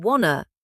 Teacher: Sometimes sounds are dropped, like the T in want, to disappearing in wanna.